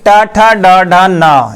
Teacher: ये मोड़ करके बोलते हैं, इसलिए मूर्धा होगी।